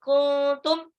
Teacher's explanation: nunnya nggak boleh jelas, harus samar karena dia ikhfa, nun sukun ketemu ta.